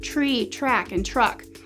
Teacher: children might confuse sounds in words like tree track and truck they may perceive a CH rather than a t and a r in the consonant cluster TR